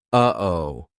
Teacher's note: That uh-oh is a perfect example of how to use the glottal stop. We aren't making the same mouth formation like we do for the true T or even the held T. It's coming from our throat.